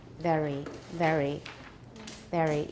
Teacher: for British English it tends to be pronounced with the tip of the tongue close to the alveolar Ridge so very very it's more tip of the tongue close to